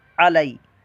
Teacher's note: आगे लाम या ज़बर लई, ये या साकिन से पहले ज़बर आ गई तो या लीन, इसको लंबा नहीं करना, अलई नहीं करना, अलई।